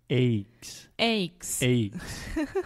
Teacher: in the midwest they tend to use a diphthong or what we call here at English a moving vowel for the word eggs